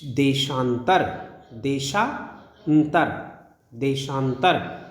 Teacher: देश का जो अ है और अंतर का जो अ है, ये दोनों मिलकर के आ बना रहे हैं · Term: दीर्घ संधि